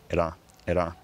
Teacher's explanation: traditionally that r sound is an alveolar tap, ra, ra, or very occasionally I think a trill, ra, ra.